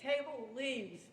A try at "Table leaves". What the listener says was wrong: Yes, even more with the V.